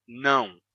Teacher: Bem, o que aconteceu foi que essas três terminações terminaram se fundindo em uma só. Todas se uniram e a gente passou a pronunciar tudo com som de ão. Então, non se tornou não.